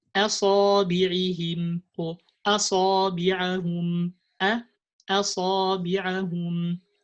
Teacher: So Hamza doesn't follow the letter before or the letter after. So we have to pronounce the Hamza light as a separate letter